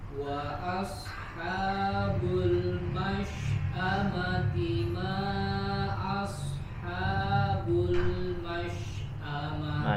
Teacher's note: huruf lamnya jangan dipantulkan, huruf lam sukun